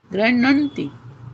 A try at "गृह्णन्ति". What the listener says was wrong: हाँ के बाद अणा जब आता है, अणा डबल हो जाता है ना। हाँ में आ मत लगाइए। हाँ में आ मत लगाइए। गृह्णन्ति। गृह्णन्ति। हाँ, गृह्णन्ति।